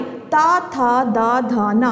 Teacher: ता की पूरी सीरीज हमारी दंत होती है